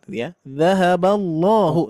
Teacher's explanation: lafaz Allah ini tetap harus dibaca Dua harakat meskipun fathahnya biasa gitu ya enggak ada tanda Mad dua harakat yaahaballahu tetap dibaca